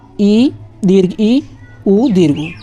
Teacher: संवृत स्वर होता है जिसमें मुख लगभग बंद रहता है